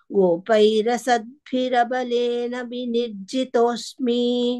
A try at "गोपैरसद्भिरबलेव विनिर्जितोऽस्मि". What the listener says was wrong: You didn't have Balena over there because I'm having Baleva, but you are reading Balena.